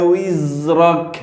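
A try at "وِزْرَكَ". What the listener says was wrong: oke, bagus, bait selanjutnya.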